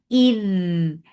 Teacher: This Rakhawa on Dal will give that Zabzaba sound and it should be there.